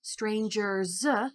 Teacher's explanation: ER is one of our suffixes that's saying that it is a person who is strange, stranger. And then by adding that S at the end, strangers, that's a Z sound, and that S at the end is also a morpheme in and of itself because it's a thing that assigns meaning.